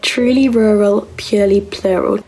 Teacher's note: If you're a non-rhotic speaker, then purely doesn't have an R sound in it at all.